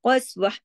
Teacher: ता दो जबर तन की जो ता मरबूता है, ये हा की शक्ल इख्तियार कर लेगी , कस्वा ऐसे हो जाएगी, कस्वा, व इन, नून पे तशदीद